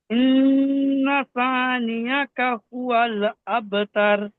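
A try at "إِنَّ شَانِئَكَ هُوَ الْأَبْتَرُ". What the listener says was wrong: আচ্ছা, এটা এটা সা বলছেন কেন? এটা সা কি কোন দিক থেকে আপনি সা বলছেন এটা? বেলাল ভাই ও সা বললেন, আরো এক দুজন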